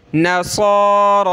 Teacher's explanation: کھڑا زبر کو ایک الف کی لمٹ میں کھینچتے ہیں اوپر، یا کو ہم نے نہیں پڑھنا، صاد کو موٹا کریں گے